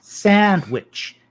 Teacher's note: there's a glottal stop between sand and witch sandwich you hear this when say arabic speakers say israel they'll